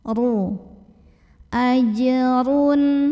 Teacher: ro-nya dibunyikan secara tafkhim karena ro-nya berbaris dhammah tanwin, maka bacanya ditebalkan, pangkal lidah dinaikkan.